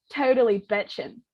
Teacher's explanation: the I vowel lowered and went back. So it went from I to E. So if we're putting those 2 together, totally betchin'. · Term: California vowel shift